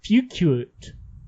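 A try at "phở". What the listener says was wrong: No, pho. There's no U in pho. No, pho. The pho. P-H-O. Pho.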